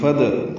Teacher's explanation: فدعوہ میں فا اور ادعوہ ملا دیں گے. فد قلقلہ ہوگا دال ساکن پہ